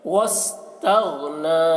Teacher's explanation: غین کو بھی موٹا کر کے اور غین میں قلقلہ نہ ہونے پائے اس کا خیال رکھنا ہے